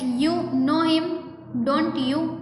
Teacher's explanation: So with rising intonation on don't you to show it's a question.